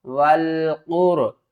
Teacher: قاف کو پر پڑھیں گے اور را کو بھی موٹا پڑھیں گے